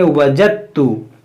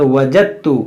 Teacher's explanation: اب یہ دال کی آواز کہیں بھی نہیں آ رہی ہے کیونکہ دال اس تا میں داخل ہو گیا لیکن یہاں پر یہ تا کی آواز محسوس ہوگی. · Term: دال کی آواز نہیں